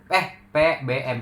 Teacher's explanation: Yang pertama tuh bibir atau bilabial. Jadi bunyi bilabial dihasilkan dengan menggunakan bibir atas dan bibir bawah. Keduanya saling bertemu saat menghasilkan bunyi.